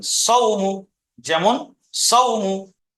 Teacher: ওয়াউলিনকে সর্বদা নরম আওয়াজে তাড়াতাড়ি পড়তে হবে, টান দেওয়া নিষেধ